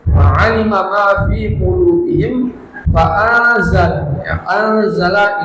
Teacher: anzala ini ada ikhfa disamarkan lalu didengungkan